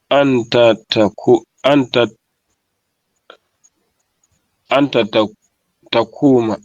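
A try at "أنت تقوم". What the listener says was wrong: Takumu. Takumu. Les verbes au présent se terminent toujours par ou.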